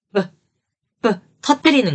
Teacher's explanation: 그래서 윗입술과 아랫입술을 파열하는 거죠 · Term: 파열음이에요